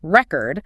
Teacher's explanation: putting the stress on the first syllable for the noun, like record